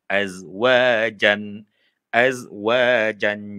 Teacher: Jangan bunyikan az, dia tak ada qalqalah di situ.